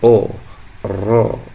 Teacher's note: Ini dikarenakan huruf ro harus dibaca tebal. Tebal adalah dengan menaikkan pangkal lidah sehingga saat dibaca terdengar seperti o ro.